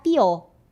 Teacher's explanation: E para a palavra pior, eles não pronunciam esse último fonema, o R.